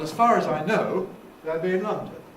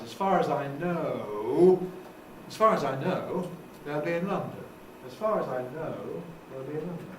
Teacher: one common pattern is a fall in the main part, followed by a rise.